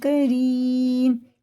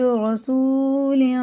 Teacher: یہ را زیر سے باریک ہے، یہ زبر سے پورا ہے